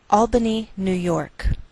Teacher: we treat New York as one word and we place more stress on the second part York